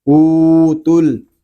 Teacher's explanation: تا لام پیش تل، او تل، تا کو ہم لام کے ساتھ ملا دیں گے